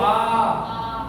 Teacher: बोल के देखो आ पूरा खुला है